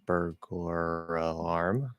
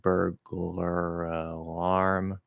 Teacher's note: If you're speaking really quickly, you could just do 2 half L's, 2 dark L's